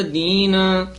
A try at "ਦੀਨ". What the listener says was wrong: ਦਦੇ ਹਲੰਤ ਨਹੀਂ ਲਾਉਣਾ ਨਨੇ ਤੇ ਲਾਉਣਾ